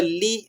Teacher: لام زیر لی پڑھنا ہے، لام زیر لے نہیں پڑھنا